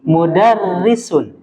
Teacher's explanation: huruf ro ditasdidkan tapi dia berharakat kasrah maka apa yang mendominasi apa kita baca dengan tipis tarkik